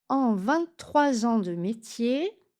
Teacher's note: 23 ans, liaison en Z obligatoire.